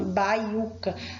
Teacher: E essa palavra, ela é uma palavra paroxítona, baiuca. O U é o que tem o som mais forte, então é a penúltima sílaba forte, paroxítona. Mas não é acentuado porque está seguido de ditongo.